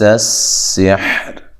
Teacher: جب آپ سین کو ادا کریں گے تو باریک سیٹی کی آواز آنی چاہیے